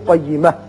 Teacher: قیمتن ہے لیکن یہاں وقف مطلق بھی ہے اور آیت بھی ختم ہوتی ہے، تا کو ساکن کر کے پڑھیں گے